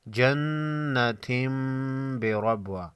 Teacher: ساکن پر قلقلہ ہوگا، تنوین کے بعد با ہے، اقلاب ہوگا، تنوین کے نون کو میم میں بدل کر غنہ کے ساتھ پڑھیں گے